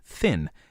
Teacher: nasal part means that the sound is passed through the nose the mm in thin is not a velar nasal but an alveolar nasal because it is pronounced in the alveolar Ridge